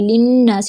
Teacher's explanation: تو مد یہاں پر جو مد ہوگی مد صلہ صغرا ہوگی، للناس نون میں شدد اکمل گنہ، ساتھ میں الف مد ہے ، سین کے نیچے زیر ہے جلدی سے ادا کریں گے،